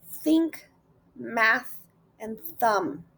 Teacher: The first is a voiceless interdental frictive. You make it by gently placing your tongue between your teeth and blowing air out, but without using your voice.